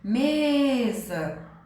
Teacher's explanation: Qual é a sílaba tônica o me então é a segunda de trás para frente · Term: paroxítona